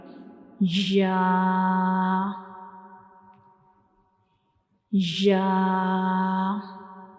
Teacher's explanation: we will touch the middle of the tongue to the upper hard palate